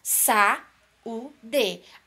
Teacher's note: Então, aí nós temos um hiato. O encontro de uma vogal e uma semivogal em sílabas separadas.